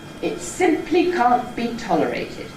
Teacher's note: successive accents can step down in pitch and give you a stepping head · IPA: It ˈsimply ˈcan’t be ˎtolerated